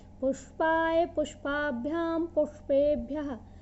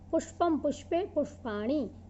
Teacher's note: अब आपको इनके उच्चारण समझ में आ गए होंगे कि इसमें मूर्धन्य षकार है, इसको बड़े ध्यान से उच्चारण करना पड़ता है।